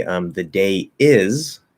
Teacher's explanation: If you are linking, if you're flowing from a word that ends in the diphthong A, and you're going into any other vowel sound, then it will link with a small Y, not a full Y, a small Y.